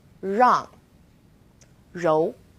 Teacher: it's quite similar to the r sound in run but the r a little softer so try moving your tongue more to the back of your mouth